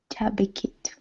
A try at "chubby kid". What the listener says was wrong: So try not to make the ending on the kid sound like a T. Try to go for a D. So not chubby kit, but chubby kid.